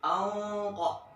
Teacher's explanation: Seakan-akan kayak mau ngomong huruf ko tapi nggak jadi. Lidahnya di huruf ko, tapi huruf nun. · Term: ikhfa yang tebal